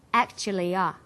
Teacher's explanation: This is linking type 1, vowel plus y plus vowel. Actually ends in an e vowel sound, and the next word begins with a schwa sound. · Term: y linking